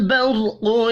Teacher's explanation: قوف حروف مستعلیہ ہے، اس کو بھی پر پڑھنا ہے